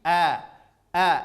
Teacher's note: huruf hamzah dari pangkal tenggorokan